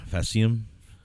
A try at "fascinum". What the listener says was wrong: There's an N in there. Fascinum.